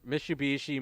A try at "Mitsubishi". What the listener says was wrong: There's a T in Mitsubishi. You're saying Mitsubishi. It's Mitsubishi. There's a T.